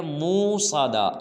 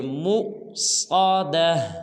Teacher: آگے حمزہ ہے، جھٹکے کے ساتھ پڑھیں گے